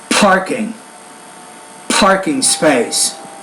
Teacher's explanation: when you're producing that P sound, do that with a little bit more air